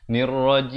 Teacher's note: di akhir barulah kita tutup mulut menyempurnakan huruf mim. Jangan tutup daripada awal jadi bunyi nirrajim.